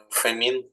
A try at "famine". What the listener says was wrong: The stress. A famine. Repeat.